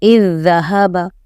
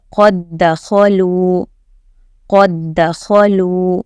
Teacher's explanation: تو یہاں پر جو ہے پہلے لیٹر کو، پہلے جزم والے لیٹر کو ڈراپ کر دیں گے اور سیکنڈ لیٹر پڑھیں گے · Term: تشدید